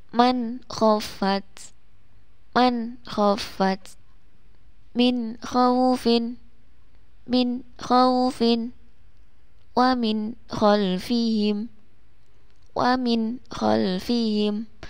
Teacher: ketiga contoh ini adalah nun sukun yang bertemu dengan huruf kha, maka harus dibaca jelas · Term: idhar halqi